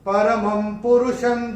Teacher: अनुस्वार के बाद जब प आएगा तो अनुस्वार का उच्चारण होगा म